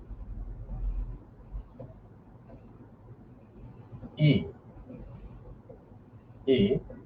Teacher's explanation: এগুলো মুখের তালু বরাবর উচ্চারণ করা হয়, তালু বরাবর থেকে, এজন্য এটাকে আমরা বলি তালব্য ধ্বনি